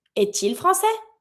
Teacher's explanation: I'm going to link it because I have my vowel from il.